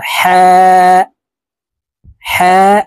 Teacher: উচ্চারণ হলকের শুরু থেকে হা উচ্চারণ করি হা এভাবে পড়ে থাকি হলকের মধ্যখান থেকে পড়তে হবে